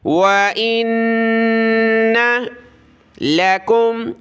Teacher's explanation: نون پر غنہ ہے، ناک میں آواز پیدا کریں گے